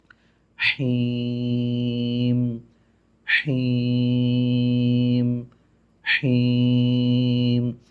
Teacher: حیم جو ہے وہ بھی ہا ہے لیکن وہ حلق کے درمیان والے حصے سے ادا ہوتا ہے. تو جسے وسط حلق بھی بولتے ہیں، درمیان والا حلق بھی بولتے ہیں، جو بھی آپ کو سمجھ آ جائے.